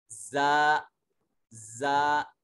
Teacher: یہ حروف صفیریہ میں سے ہے زا، اور اس کی ادائیگی میں سیٹی کی آواز آنی چاہیے۔ سامنے والے جو اوپر اور نیچے والے دانت ہیں ان دونوں دانتوں کو بند کرنے کے بعد زبان کے پریشر سے اس کو ادا کیا جائے گا۔